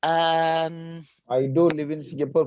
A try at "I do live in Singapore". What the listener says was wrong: yes, but not I do live in Singapore like that. You would never say it like that. You've got to emphasize the auxiliary verb. I do live in Singapore.